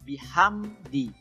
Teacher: Jadi mimnya harus dibaca jelas. Jangan mantul juga ya, karena itu bukan huruf qalqalah. Jadi jangan bihamdi, tidak boleh. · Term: izhar syafawi